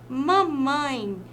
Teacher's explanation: a palavra mamãe percebam que traz um sonzinho nasal